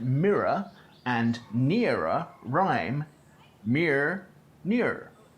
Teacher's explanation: /ɪ/ as in 'pit' and /iː/ as in 'Pete' fall under the influence of an /r/ and the contrast between them is lost